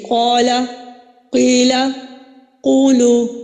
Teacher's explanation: یہ حروف مدہ میں ہوتی ہے، اور حرکات مدہ میں بھی ہوتی ہے، کیونکہ حرکات مدہ حروف مدہ کے قائم مقام ہوتے ہیں. تو قال میں الف مدہ ہے، اس کو ہم 1 الف یعنی 2 حرکات کے برابر کھینچیں گے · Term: مد اصلی